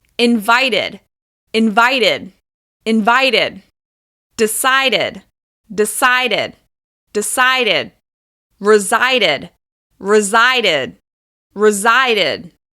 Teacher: adding the /Id/ sound to the end of these verbs adds an extra syllable · But with the -ed ending after t and d sounds, you do need an extra syllable